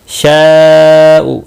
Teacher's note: شاء یہاں پر مد متصل ہے، چار الف کے برابر کھینچ کر پڑھیں گے۔